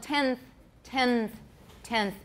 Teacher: 10th 10th because we're getting ready to say the the sound the n ends up interdental as well that's called co-articulation or assimilation